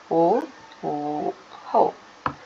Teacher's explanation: ಕಂಠ ಮತ್ತು ತುಟಿ ಅಂದ್ರೆ ಗಂಟಲು ಮತ್ತು ತುಟಿ ಎರಡು ಸಹಾಯವನ್ನು ಪಡೆಯುವಂತದ್ದು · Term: ಕಂಟೋಷ್ಟಿ